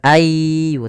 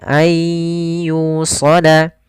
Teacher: idghamnya idgham nakis, tapi tidak terlalu hilang secara keseluruhan, masih ada sebagian. Maka bukan ayyu tapi ayyusala.